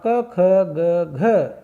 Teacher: तो क वर्ग का उच्चारण स्थान क्या है, कंठ है, और तो इसलिए घ का भी उच्चारण स्थान क्या हुआ, कंठ हुआ।